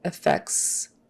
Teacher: the t in the middle of that c s sound is so very slight that it's not very noticeable